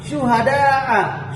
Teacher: Syuhada'a ini menunjukkan bahwa ada huruf huruf dal, setelahnya ada alif yang harus dipanjangkan berkisaran sampai 6 ketukan yang disebut dengan mad wajib muttasil